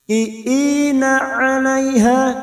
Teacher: huruf ain rongga tenggorokan lebih menyempit. 'Alaiha, fathah bertemu ya sukun huruf layin kita lunakkan.